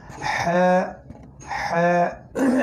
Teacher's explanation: হা একদম গলার মাঝখান থেকে